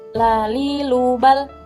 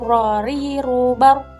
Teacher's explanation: Lam condong keluar atau ke ujung lidah, sedangkan ro condong ke dalam serta sedikit keluar lam.